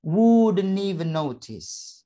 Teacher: t pada kata notice itu diapit oleh suara o dan i, maka bisa suara t tadi kita rubah menjadi d